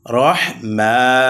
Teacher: মিমের উপরে খারা জবর আসার কারণে এক আলিফ টান হবে। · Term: মাধ্যে তবা